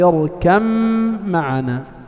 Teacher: لا يبقى من الباء شيء، لكن إن كان الأول حرف إطباق فإنه يبقى أثر الإطباق واضحا. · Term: إضغام المتجانسين